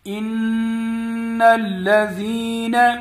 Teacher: نون مشدد ہے، یہاں پر غنہ ہوگا۔